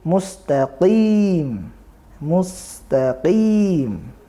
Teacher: Ada huruf qafnya, ya ini terletak pada pangkal lidah.